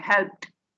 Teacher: Phonetics આપણને શીખવે છે કે જ્યારે પાછળ ઈડી આવે છે હેલ્પમાં તો તેનો ઉચ્ચાર ટ થાય છે, હેલ્પ્ડ આ રીતે થાય છે, બરાબર.